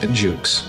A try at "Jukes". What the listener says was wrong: Did you say Juice? Oh, sounds like you're saying Juice.